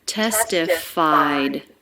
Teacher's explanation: So just a light D sound at the end, which then links into the next word, the. · It's just a sound. It's the D sound. So there's no extra syllable. It's not a vowel and a consonant. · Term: ED ending